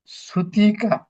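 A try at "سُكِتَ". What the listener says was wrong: সুতিকা না, সুকিতা, সিন পেশ সু, কবজের কি, ত জবর সুকিতা, সুকিতা। সুকিতা।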